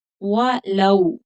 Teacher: वाव लीन है क्योंकि पिछले हर्फ पर जबर है तो थोड़ा जल्दी पढ़ेंगे नरमी के साथ।